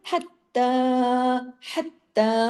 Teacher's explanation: हा को गले से पढ़िए और सख्ती से ता के साथ जोड़िए, बारीकी के साथ पढ़ना है।